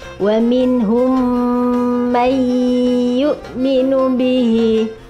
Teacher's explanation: Hukum bacaannya adalah idgham ma'al gunna, dimasukkan, disertai mendengung, atau disebut juga idgham mimi ya. Wa minhum may yu'minu bihi.